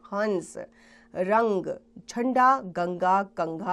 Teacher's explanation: अंग की ध्वनि को अनुस्वार कहा जाता है इसका उच्चारण नाक से किया जाता है